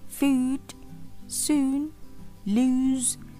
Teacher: the position is in the middle of central and back of our tongue, and it's still close, and the lips are only moderately rounded. Jadi bentuk bibir kita tidak sepenuhnya bulat. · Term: long U